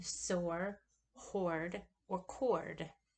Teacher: And these are still considered open vowels, even though they have that R sound with them. The R is coloring the vowel or making the vowel have an R sound. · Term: R colored vowel